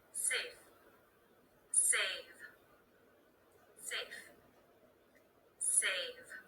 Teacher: full full it's that stop T that's cutting off the sound that unvoiced consonant at the end that even though is not released does affect the vowel length